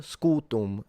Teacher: The u is long, the m fully nasalized, a bit like you do in Portuguese rather than Italian